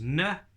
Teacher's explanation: nuh is our tongue at the top it's kind of on that little ridge behind your top teeth